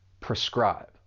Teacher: this verb has two syllables, and the stress is on that second syllable